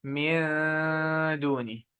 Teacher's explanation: Noon followed by dal. Dal also is light letter. So light ghunna.